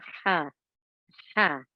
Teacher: pronounced from the middle of the throat air escapes slightly it is a sharp release over one of the six letters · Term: big ha